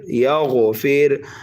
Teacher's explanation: غین حروف مستعلیہ میں سے ہے اس لیے پر کر کے پڑھیں گے